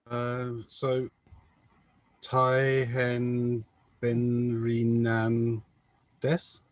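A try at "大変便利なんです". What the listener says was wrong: Perfect. Exactly. Taihen Benrinan des. Exactly this. Good. Well done.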